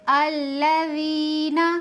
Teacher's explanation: ذال میں سیٹی کی صفت نہیں ہوتی ہے، سیٹی کی صفت ان تینوں حرفوں میں ہوتی ہے، تو ذال کو بغیر سیٹی کے پڑھیں گے